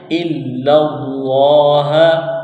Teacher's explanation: لفظ اللہ کے نام سے پہلے زبر ہے تو لفظ اللہ کے نام کو موٹا کرنا ہے